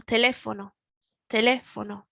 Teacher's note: we've got the accent on the E, so we can kind of hear the word, the tone in our voice climbing up in the middle